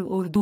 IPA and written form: ˈʊərduː (Urdu)